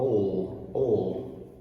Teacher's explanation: You actually touch the roof of the mouth with your tongue, your alveolar ridge, which is just above your top teeth, just like in the light L, but the back of your tongue is what's doing all the work. Ol. Okay, so well, Lily Lily. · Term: dark L